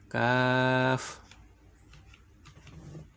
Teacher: 5 নম্বর মাখরাজ, জিহ্বার গোড়া থেকে একটু আগে বাড়িয়া। জিহ্বার গোড়া থেকে একটু আগে বাড়িয়া তার বরাবর উপরের তালুর সঙ্গে লাগাইয়া মধ্যখান পেঁচানো কাফ।